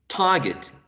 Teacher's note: in the word target the initial is aspirated